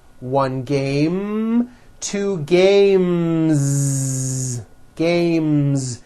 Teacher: the last sound you hear in the word game is the m sound m which is a voiced consonant so because of that when you add an S the S